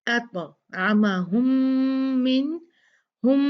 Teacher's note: 2 मीम मिल गए तो गुन्ना होगा, बहुत स्ट्रॉन्ग गुन्ना है ये